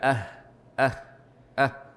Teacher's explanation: ستخرج هواء كثيرا لبيانها لبيانها وذلك لانها خفيه ضعيفه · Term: الهاء